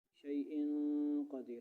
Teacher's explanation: اخفاء، ناک میں لے جانا